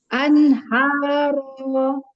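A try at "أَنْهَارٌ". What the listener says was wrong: Bukan haro itu ya. Kita belum belajar tanda wakaf, jadi dibaca dengan sempurna. Anharon. Ron ya.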